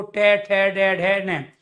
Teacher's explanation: मूर्धन्य जो वर्ण होते हैं वो हमेशा वाइब्रेशन के साथ हम उच्चारण कर पाते हैं, उनके अंदर कंपन होता है